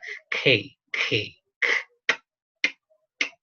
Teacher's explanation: The K is unvoiced, velar, and stop. Here. This is the position of the tongue or the articulation that we produce.